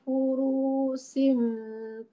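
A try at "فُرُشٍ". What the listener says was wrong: Furushin pendek ya.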